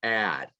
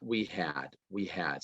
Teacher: every time we have an H, and it's often a pronoun, but sometimes it's not. Okay. The H disappears. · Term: reduced H